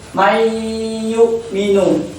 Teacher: Jadi seperti itulah cara baca idgham diuna, yakni ditahan 2 harokat dan disertai dengan dengung